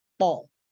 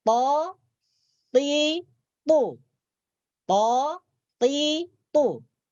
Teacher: makhraj huruf ta adalah hujung lidah menyentuh dua pangkal gigi seri atas. Menyentuh gigi, kalau disebutkan secara ringkas, hujung lidah menyentuh gigi bagian atas.